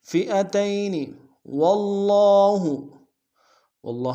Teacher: واو کو کھڑا زبر ایک اسم دار میں کھینچیں گے، شد ہے زور دیں گے